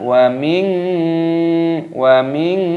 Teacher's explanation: nun sukun bertemu dengan huruf syin hukumnya dibaca ikhfak maka cara membacanya yaitu dengan cara disamarkan